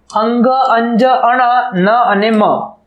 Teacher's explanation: સાનુનાસિક એટલે કે નાસિકામાંથી હવા બહાર નીકળે છે. અંગ, અંજ, અણ, ન અને મ આનું ઉચ્ચારણ કરતી વખતે હવા નાસિકામાંથી બહાર નીકળે છે જ્યારે બાકીના ધ્વનિ ક ખ ગ ગ ચ છ જ જ ટ ઠ ડ ઢ અણ ત થ દ દ અણ તો આપણે નાસિકામાંથી બહાર નીકળશે એ ત થ દ દ અને પ ફ બ બ.